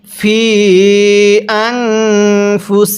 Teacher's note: এই ফিয়ের মধ্যে আমরা 3 আলিফ টান দিব, কারণ মদের হরফের উপর চিকন চিহ্ন এরপরে লম্বা হামজা থাকলে সেখানে আমাদের 3 আলিফ টেনে পড়তে হয়।